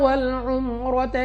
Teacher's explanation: را پر زبر، را کو پر یعنی موٹا پڑھیں گے